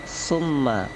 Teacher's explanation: summa itu ada mim gunnah di atasnya, dibaca dengung